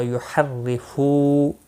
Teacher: را زیر کی وجہ سے باریک ہوگا، ایک الف کے برابر کھینچ کر پڑھیں گے۔